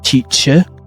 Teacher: in British English, you might hear teacher where the letter R is not pronounced.